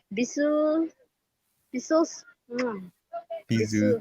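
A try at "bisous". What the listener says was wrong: Bizu. You don't say the S at the end. And yes, like a Z. Bizu.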